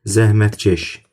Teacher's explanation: Bax burdakı k g əvəzləməsi baş vermir bu şəkilçilərdə.